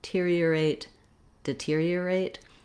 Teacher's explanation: You notice how the D almost has no vowel at all. So it doesn't matter too much if I'm doing I or a, just be very short. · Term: reduced vowel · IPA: /dɪ'tiri ə reɪt/